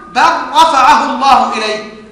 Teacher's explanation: ووجب ادغام اللام في الراء